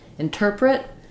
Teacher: is stressed on the tur syllable so we have a reduced in and then we have our stressed tur and then print we have an i vowel or reduce